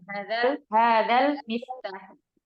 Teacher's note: Jadi tidak perlu dipanjangkan di huruf dalnya.